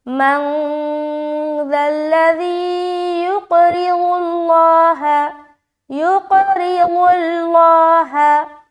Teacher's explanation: دیکھیے یہ جو دونوں لفظ ہے، قاف کو موٹا رکھیں گے اور قلقلہ بھی کرنا ہے، را کو باریک رکھنا ہے کیونکہ اس کے نیچے زیر آ گیا، ضاد کو موٹا ادا کرتے ہوئے لام میں ملائیں گے، پھر لام کو بھی موٹا پڑھیں گے، کیوں؟ کیونکہ ضاد کے اوپر پیش ہے۔